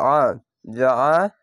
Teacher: আইনটিকে মোটা করে গলা চিপে পড়বেন